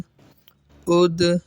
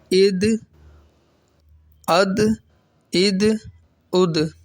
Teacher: قلقلہ ساکن ہے تو قلقلہ خوب ظاہر ہوگا